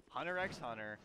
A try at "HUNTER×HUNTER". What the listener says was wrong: Sir, you don't say the X.